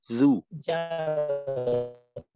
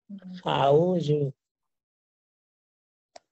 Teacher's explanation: জাল তো জিহ্বার আগা সামনের উপরের দুই দাঁতের আগার সঙ্গে লাগাই উচ্চারণ করতে হবে। তো এইটা এমন না থাকলে কিন্তু জিম জাল, বোঝার সম্ভাবনা থাকবে। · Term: জালের মাখরাজ